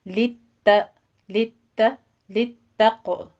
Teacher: लित्तक़वा में ता बारीक पढ़ी जाएगी, सिर्फ आपने इसकी तशदीद अदा करनी है, इसको त्वा नहीं बनाना। लित्तक़ तक़ नहीं कहना आपने।